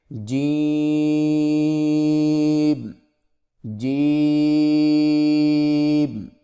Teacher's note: زبان کے درمیان کو تالو کے ساتھ سختی سے لگا کر باریک آواز میں پڑھیں، یعنی جیم، اس کو تھوڑا سا کھینچ کے پڑھیں گے، جیم جیم۔